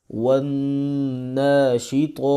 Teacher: نون پہ غنہ کریں گے کیونکہ نون کے اوپر شد آ رہی ہے، اور جس نون کے اوپر شد آ جائے قرآن پاک میں جہاں بھی ہو اس پہ لازمی غنہ کریں گے.